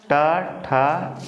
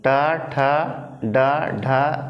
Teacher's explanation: जीभ मुड़ रही है, मुड़ रही कि नहीं? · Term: मूर्धा